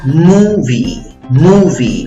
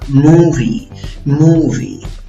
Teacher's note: la fuerza de voz va en la primera sílaba contando de izquierda a derecha